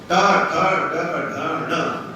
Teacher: देखिए बोल के निकलता है किसी मुंह से, जीभ को मोड़े बिना टा का उच्चारण कर देखिए, मुड़ रही है ना अपने आप। बिना जीभ को पलटे टा का उच्चारण नहीं हो सकता, इसलिए तो क्या मतलब मूर्धन्य।